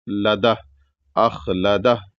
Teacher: جب رکیں گے تو ہا کی آواز نکال کے رکیں گے